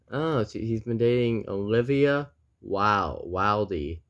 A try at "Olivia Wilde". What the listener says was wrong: The E is silent.